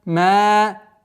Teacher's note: Удлинение фатхи в размере двух огласовок